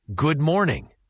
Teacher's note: The or in morning is a common sound in English. Make sure it's rounded. · It's not good d morning, but more like goo morning. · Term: blending